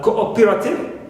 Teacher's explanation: For example, in words like cooperative, stress is on o, not on co